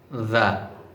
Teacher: জিহ্বার আগা সামনের উপরে দুই দাঁতের আগার সাথে লাগিয়ে উচ্চারণ করতে হবে